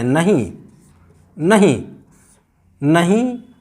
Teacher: नहीं बोलकर देखें, इसमें अनुस्वार नहीं आ रहा है, अनुनासिक आ रहा है